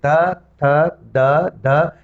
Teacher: दांतों के बीच में जीभ आ जाती है, दोनों दांतों का सहारा लेना पड़ता है। इसीलिए इन वर्णों को दंत्य वर्ण कहते हैं।